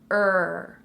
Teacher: you form the sound by rounding your lips and your tongue is not touching anything it's just in the middle of your mouth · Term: R coloured vowel